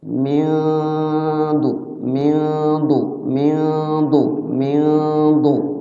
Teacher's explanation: nunnya itu terbaca tapi agak samar cara menyamarkannya itu saat membaca ba Nun lidah kita sudah siap-siap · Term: ikhfa